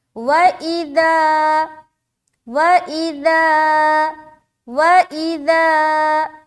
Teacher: اِذَا میں ہم اسٹریچ کر رہے ہیں کیونکہ یہ خالی الف ہے اور اس سے پہلے زبر ہے۔ جب بھی الف خالی سے پہلے زبر دکھائی دے تو سمجھ جائیں کہ یہ الف مدہ کا قاعدہ ہے اور یہاں پر ایک الف کے برابر کھینچنا ہے۔